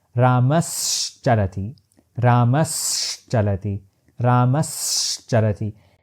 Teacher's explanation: when dental tsa is followed by palatal sounds the tsa midway has tendency to convert in self into half sha. So, for example, if I say Rama's charati, together in one breath, it becomes Rama's charati.